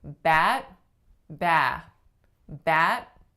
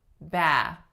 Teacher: because in bat I am bringing my tongue up and stopping my airflow you're gonna hear a sudden nothingness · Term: unreleased T's